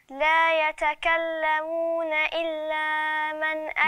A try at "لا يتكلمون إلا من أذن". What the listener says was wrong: ما تمديش قوي أكتر المد، يعني ما تمديش زيادة. إلا من. إلا من.